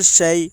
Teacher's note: یا ساکن سے پہلے زبر ہے اس لیے یالین ہوگی، یالین کو نرم آواز کے ساتھ جلدی ادا کریں۔ معروف پڑھیں، مجہول آواز سے بچیں۔